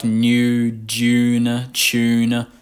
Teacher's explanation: a lot of young Australians are beginning to drop that Y sound in words like new June chune